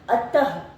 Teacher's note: जब हम प्रातः बोल रहे तब भी हमें अंत में ह की ध्वनि सुनाई दे रही है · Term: विसर्ग